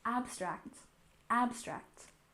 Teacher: We have abstract art with a stress on the first syllable, abstract, abstract.